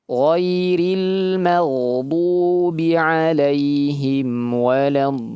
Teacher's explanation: Almagubi ginnya ditebalkan. Ghairi ginnya ditebalkan.